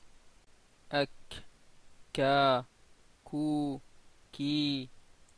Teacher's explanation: le aqsa al-lisan rentre en contact avec le palais dans la zone médiane, dans la zone d'interface entre le palais mou et le palais dur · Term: kaf